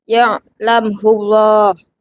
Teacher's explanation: mim mati dibaca jelas karena bertemu huruf selain mim dan ba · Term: Idhar syafawi